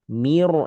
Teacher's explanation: Tipis dulu mi, lalu roknya tebal, rok sukun tebal.